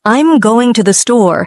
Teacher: The emphasis hits going and store. Little words like I'm and to thee get rushed.